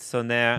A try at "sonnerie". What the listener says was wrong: You don't pronounce the E, actually. It's just sonnerie. No, you don't pronounce the E.